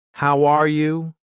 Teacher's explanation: when I say how are you, my voice goes up at the end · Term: Intonation